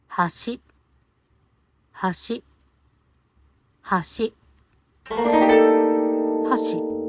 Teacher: The pitch starts high then drops means chopsticks.